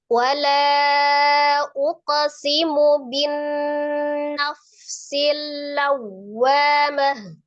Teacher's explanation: Ketika disukunkan tak marbutoh berbunyi huruf H. · Nun tasdid wajibul gunnah akmal matakun, tingkatan yang pertama gunnahnya.